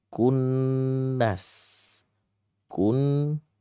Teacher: Jangan membaca dengan cara tebal tafkhim atau dengan cara isti'la terangkat lidahnya tapi harus istifal lidahnya turun.